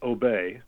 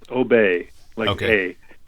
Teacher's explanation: even though there's a y there you don't hear the Y it's not like the Y in yellow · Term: open vowel sound